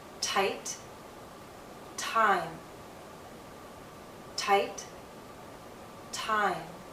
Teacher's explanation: M is a voiced consonant, so the same sound now becomes longer. Because it's longer in the word time, you're going to see more movement in my mouth.